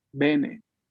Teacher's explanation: La primera es abierta. La boca se abre mucho.